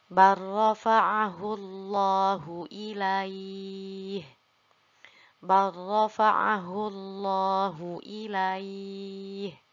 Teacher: Nah, dalam beberapa mushaf ada yang menambahkan tasydid di atas huruf ro-nya. Nah, di sini lamnya kita leburkan, lalu kita langsung saja baca pada huruf ro. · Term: idgham